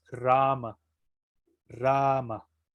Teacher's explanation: se pronuncia dos veces o tiene dos tiempos la a con un palito arriba